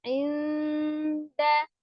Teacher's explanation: Inda ada nun sukun bertemu dengan dal ikhfa ya. Inda ditahan disamarkan ya.